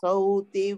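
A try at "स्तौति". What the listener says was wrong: stauti you are saying sauti yeah. It is not sau, it is stau. Ta is also there. Stauti.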